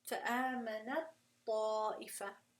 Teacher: We just go straight into the ta sound.